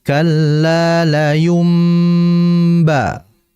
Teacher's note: Dan iqlab bermakna qalb, yaitu merubah nun mati tadi menjadi mim. Makanya ada mim kecil ya dalam Mushaf Madinah, maka seakan-akan mim mati bertemu ba.